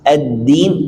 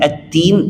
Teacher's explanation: Masalah pita suara, jahar dan hamas. Ad-din ada jahar, ada gataran karena pita suara hampir tertutup, nafasnya agak lancar buat gataran. Tapi ad-tin pakai ta, hamas, nafasnya lancar karena pita suara terbuka.